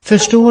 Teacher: What's happening is the R is retroflexing the following dentals. Förstår. I would say it's 2 segments, retroflex S, retroflex T.